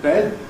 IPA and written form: bed (bed)